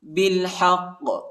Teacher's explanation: قاف پر شد آیا ہے، اور قاف کو جو ہے موٹا پڑھیں گے، ٹھیک ہے، اور وقف بھی کریں گے تو آیا ہے۔